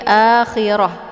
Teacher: ketika kita berhenti otomatis kita sukunkan huruf akhir yaitu ta nah ketika kita sukunkan t-anya maka yang menjadi bacaannya bukan lagi Ta namun sudah berubah menjadi ha walakhir jadi bukan dibaca wal akhirat ya tapi akhirah nah ini · Nah, ini ta marbutah. Jadi kalau dibaca jadi ta, kalau disukun jadi ha. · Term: th marbutah